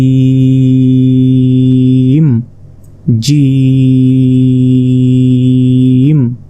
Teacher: পড়তে হবে অর্থাৎ চার সেকেন্ড আপনাকে টেনে পড়তে হবে জিম জিম জিমটি উচ্চারণ হবে জিহবার মধ্যভাগ তার বরাবর ঠিক উপরে তালুর সঙ্গে লাগিয়ে